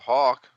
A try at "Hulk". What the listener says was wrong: I thought you said Hawk.